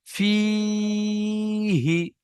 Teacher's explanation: হায়ের নিচে জের এসেছে, যেটি হলো হারাকাত, তাড়াতাড়ি পড়তে হয়, টান দেওয়া নিষেধ